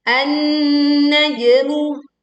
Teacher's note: Leburkan di sini alif lam ke nun bertasydid sehingga langsung menekan ke nun dan jangan lupa sempurnakan dengungnya karena di sini terdapat nun bertasydid.